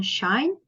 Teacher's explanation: And then we have sh sound, as in shine. It is a voiceless sound. It is also fricative, and this one is platal, which means we are using the heart plate to make the sound.